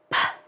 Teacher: they can be unvoiced, where your vocal cords aren't vibrating, like P is unvoiced. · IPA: /p/